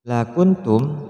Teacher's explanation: nun mati bertemu dengan ta, memasukkan suara nun mati pada ta disertai dengung